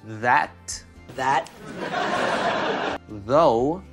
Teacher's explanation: звонкий TH делается точно так же только вы добавляете голосовые вибрации з з з Старайтесь слишком много воздуха не давать потому что